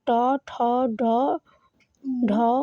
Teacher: এগুলো আপনার মূর্ধন্য ধ্বনি ট বর্গীয় ধ্বনি